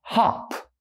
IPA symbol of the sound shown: ɒ